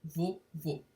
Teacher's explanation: é uma oxítona terminada em o fechado, por isso leva acento circunflexo, assim como em vovô.